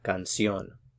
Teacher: put the stress on the last one so it's gone soon a little bit more emphasis on that last syllable